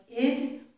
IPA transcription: ɪd